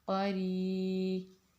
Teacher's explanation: را پہ زیر ہے تو اس را کو ہم باریک پڑھیں گے